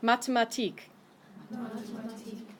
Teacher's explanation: TH sound in German, remember, is just a hard T sound, so it's not a th, but it's a t.